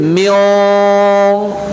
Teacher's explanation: tidak memanjangkan dengung terlebih dahulu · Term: ikhfa